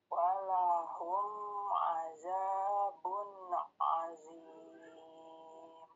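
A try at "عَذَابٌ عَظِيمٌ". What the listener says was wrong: Ini azabun, kenapa dibaca azabun? Za dengan gigi kok gigi sih? Ujung lidah ditempel ke gigi seri atas. Sama juga azim, bukan azim, bukan.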